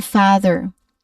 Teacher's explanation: it's a much longer more relaxed open a sound